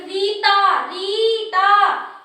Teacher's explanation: जैसे कोई ज्यादा आगे निकल गया है, उसको हम बुलाना चाह रहे हैं, तो उसका नाम मान लो रीता है, तो अपन बुलाएंगे रीता, रीता। जोर से बुलाने पर हम री खींचते हैं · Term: प्लुप्त स्वर